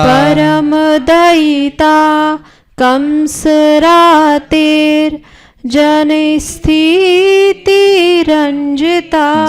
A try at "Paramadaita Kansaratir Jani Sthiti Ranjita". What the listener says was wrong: Jani has to go up. Paramadaita Kansaratir Jani Sthiti Ranjita.